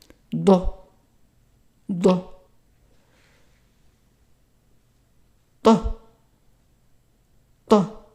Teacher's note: So it's a T in the back of the throat.